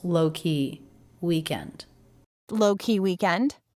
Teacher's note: Low and week are the two stressed syllables within these two syllable words.